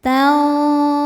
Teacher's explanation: Lalu ada hukum ikhfa hakiki awsat, karena nun sukun bertemu dengan huruf dha. Cara bacanya nun disamarkan ke dha disertai bunyi dengung dan samarnya sama besar.